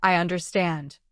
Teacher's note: When you say, I understand, the voice goes down.